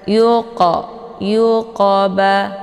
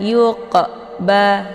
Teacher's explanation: qolqolah ini dibaca pantul dengan pantulannya ringan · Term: Qalqalah sugro, qalqalah sughra